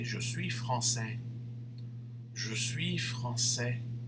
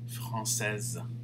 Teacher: he doesn't say the s but madame will have to pronounce the z sound at the end